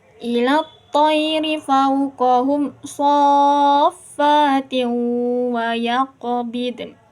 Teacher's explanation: Di sini kan ada tanwin, terus ke depannya huruf wawu, berarti idgham bigunah.